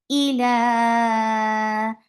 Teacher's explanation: hamza is very sharp. No flow of sound is there.